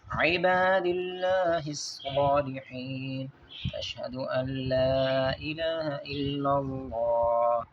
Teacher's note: الا اللہ کے آگے لفظ اللہ جو ہے یہاں پہ اس کو پر پڑھا جائے گا، باریک نہیں پڑھا جائے گا · یہاں پر ادغام کیا جائے گا اور لام کو پڑھا جائے گا، نون کو نہیں پڑھا جائے گا، نون صرف لکھنے میں آئے گا۔